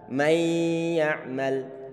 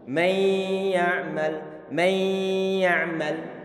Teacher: Sehingga di saat kita membaca idgham bi gunnah, pastikan hidung kita ini ada getaran-getarannya. Getaran itu adalah ditimbulkan karena ada suara dengungan yang keluar melalui hidung kita.